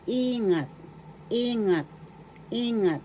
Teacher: the accent is in the first syllable